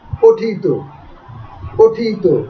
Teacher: ও এই প ইকারান্ত শব্দ তারপরে থাকার কারণে এই পটা এখানে প হয়ে যাচ্ছে, পো পো ঠি, এবং ত প্রত্যয় যুক্ত হওয়ার কারণে এই ত এর উচ্চারণটা তো এর মতো হয়ে যাচ্ছে